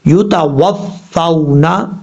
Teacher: اب یہاں پر یہ واو لین کی مثال ہے. ان کا واو لین اور یا لین کا مطلب ہوتا ہے اس کو لمبا نہیں کریں گے